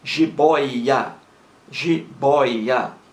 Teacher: a sílaba mais forte é a penúltima e não a última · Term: palavra paroxítona